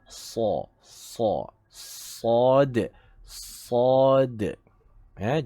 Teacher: Kerana dia adalah huruf isti'la, huruf yang tinggi. Pangkal lidah hendaklah diangkat dan menghasilkan bunyi tafkhim, iaitu bunyi tebal.